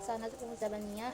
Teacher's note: nun mati pada sanad bertemu huruf za, hukum ifa itu dibaca samar